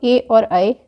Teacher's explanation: कंठ तालव्य स्वर के अंतर्गत आते हैं ए और ऐ